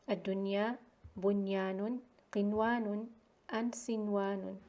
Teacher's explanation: idgham is not done when noon sakina is followed by ya or waw in a single word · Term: al-idhar al-mutlaq